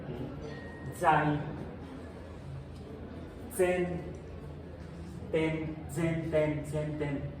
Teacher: La Z, al estilo alemán, tiene el componente de la T, es Zai. La Z se pronuncia como S, pero con la T previa.